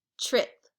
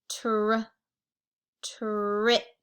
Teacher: in the word trip we hear the short i ih sound we also hear our blend with the r